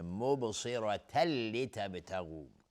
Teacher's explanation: مبصرة لتبتغوا با اینجا قلقله میخواد چون ساکنه و صاد از حروف استعلاست و را هم حکمش استعلاست چون فتحه داره. تنوین بعدش لام، ادغام بدون غنه